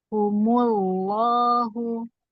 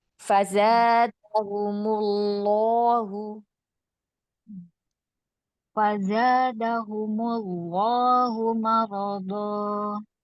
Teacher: Humullahu langsung tebal humullahu karena sebelumnya dhammah.